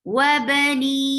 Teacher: ha should be pronounced from your throat, lower part of your throat.